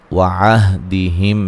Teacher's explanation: وعہدہم میم ساکن کا اظہار ہے، را کو موٹا ادا کریں گے، اور یہ مد اصلی ہے، عو و مدہ ہے، وقفاً بڑی مد کے ساتھ پڑھ سکتے ہیں۔